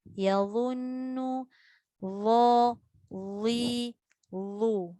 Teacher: Za mesti dibunyikan dalam keadaan tebal dan tidak ada desiran.